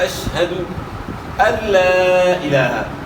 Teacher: یہاں لام کے اوپر کھڑا زبر ہے، کھڑا زبر کو بھی آپ نے ایک الف کے مقدار کے برابر کھینچنا ہے۔